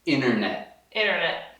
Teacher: Sempre que tem N-T, geralmente dentro da palavra o T some. A gente não está demorando ou pausando para fazer esse bafinho de ar.